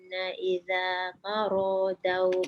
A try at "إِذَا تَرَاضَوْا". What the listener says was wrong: Idza taradau. Daw tu tebalkan dot.